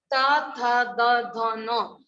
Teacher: त थ द ध न, तब हमारी जीभ है वो दांतों से टकराती है, इसलिए इसको क्या होते हैं, दंत्य ध्वनि।